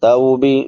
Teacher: توبی واو لین ہے، تا کے بعد واو ساکن ما قبل فتحہ یعنی زبر